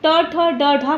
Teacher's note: ट, ठ, ड, ढ मूर्धा से उच्चारित होने के कारण जो है मूर्धन वर्ण के नाम से जानते हैं